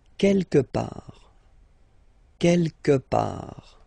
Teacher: Don't pronounce the final T.